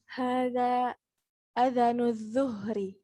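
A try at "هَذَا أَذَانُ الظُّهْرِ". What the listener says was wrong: Hamzahnya panjang adzanu.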